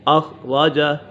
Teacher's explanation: أخرج خا پر ہے حروف مستعلیہ میں سے ہے، را بھی پر ہے، را کے برصبر ہے۔